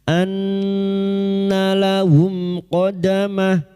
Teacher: Nun yang bertasdid guna musyaddada kita tunggukan selama 3 harakat.